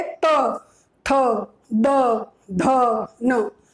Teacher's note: हम आवाज निकाल रहे हैं तो हमारी जो जीवा है, हमारी जो जीभ है, वो कहाँ टच हो रही है? दांतों को टच हो रही है। बोलकर देखोगे, त, थ, द, ध, न। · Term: दंत्य